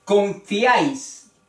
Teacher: tres vocales forman o están formando una sola sílaba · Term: triptongo